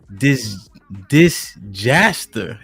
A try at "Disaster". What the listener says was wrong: The J is silent. The J is silent.